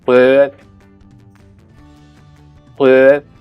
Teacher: In this word, as the first sound, according to what I can hear, we have an approximant. This is close to the French but without being a fricative but an approximant.